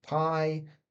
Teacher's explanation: there's no vibration here in our throat to produce these sounds